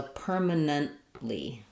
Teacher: because the T is followed by the L, that's where I'm not going to really hear that last T. So I'm going to hear permanent with a stopped T. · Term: unreleased